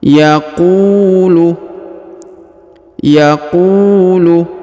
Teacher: perhatikan huruf ku diayun sekali atau dipanjangkan dua harokat, karena di depan huruf ku terdapat waw sukun atau waw mati.